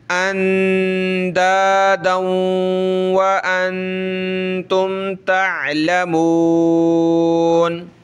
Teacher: یہ دال آگے واؤ سے پلس ہوگا، یعنی دال واؤ دو زبر دم واؤ زبر وا، ٹھیک ہے، واؤ کو ہم نے تھوڑا سا سخت کرنا ہے، اندادا وانتم تعلمون۔